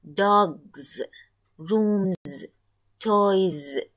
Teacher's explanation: in these words because we depended on the preceding sound and the preceding sound is a voiced sound in each word that is why we have to choose the ze ellen so